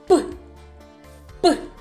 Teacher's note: повітря на своєму шляху зустрічає перешкоду губки Тому цей звук називається твердим приголос у звуковій схемі позначається однією